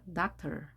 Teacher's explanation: 강세가 어딨냐면 앞에 있네요. 여기에 있는 거죠. 따라서 doctor 이렇게 되는 겁니다. doctor. 뒤에 OR이 약하게 되는 거죠.